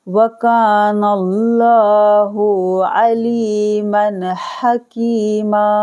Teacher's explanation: लफ्ज़ अल्लाह के लाम को मोटा पढ़ा जाएगा क्योंकि यहाँ ज़बर है